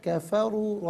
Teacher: را پر پیش را کو پر کر کے پڑھیں گے